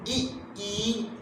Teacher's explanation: अग्र स्वर उसे कहते हैं जो जीव के अगले हिस्से से बोली जाए